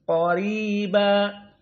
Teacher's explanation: Maka qa tafkhim, ra muraqqaqah. · ra dalam keadaan kasrah maka tarqiq dibaca dengan lunak. Qariba, apalagi ditambah dengan ya sakinah setelahnya jelas lagi.